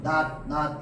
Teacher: 받침 발음이 밭 이런 식으로 낫 이렇게 혀 끝이 윗니 바로 뒤쪽으로 딱 붙으면서 끝나는 받침 발음은 전부 뭘로 통일해준다? 디귿으로 통일해줍니다.